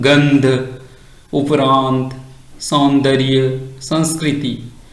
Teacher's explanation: इसमें नाकों से हवा निकलती है, नाक के भार से ही बोला जाता है। गंध, उपरांत, सौंदर्य, संस्कृति, इन शब्दों में सभी में ये अनुस्वार का प्रयोग हुआ है।